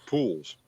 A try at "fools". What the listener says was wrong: Fools with an F. fools.